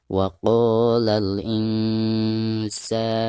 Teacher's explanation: Insanu, perhatikan ada nun sukun atau nun mati lalu berhadapan dengan salah satu huruf ikhfa yaitu sin ya. Maka cara membaca nun sukunnya itu harus disamarkan disertai dengan dengung · Adapun ketika membaca sa-nya di sini dipanjangkan 2 harokat karena dihukumi mad tabi'i.